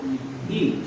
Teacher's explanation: जब भी आप ई बोलते हैं तो आपका मुंह कैसा रहता है? लगभग बंद रहता है।